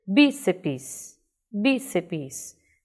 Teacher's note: a última sílaba, seps, ela é uma sílaba mais fraca, bi é muito mais forte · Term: paroxítona